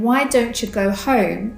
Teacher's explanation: If the word you comes after a word that ends in “nt”, the sounds merge and the ya becomes a cha.